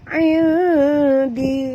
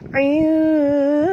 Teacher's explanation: nun mati bertemu dal, wajib dengung, wajib sembunyi dan dengung. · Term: ikhfa hakiki